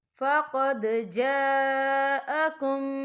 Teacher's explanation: یہ مد جو ہے مد متصل ہے، اس کی مقدار 4 حرکت کے برابر ہے، تو ہم اسے 4 حرکت کے برابر کھینچ کے پڑھیں گے